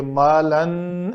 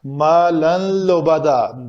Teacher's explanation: ادغام کامل ہوگا بلا غنہ، یعنی غنہ سے مراد یہ ہے کہ اس کے اوپر غنہ نہیں کریں گے، مالن ایسے نہیں ہوگا، مالن لبدا، تھوڑا سا بھی نون 50% بھی نہیں آئے گا۔